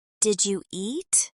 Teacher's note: Here the D and the Y combine into the J sound.